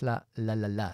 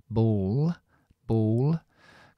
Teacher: una doble l lo mismo es es una l oscura entonces aquí lo que tienes que hacer es subir la lengua